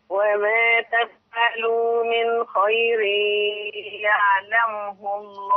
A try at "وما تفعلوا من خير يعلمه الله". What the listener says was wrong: الميمس كده كنا بنتكلم حاجة فاطمة. يا خدت من حضرتك شبه الضم كده.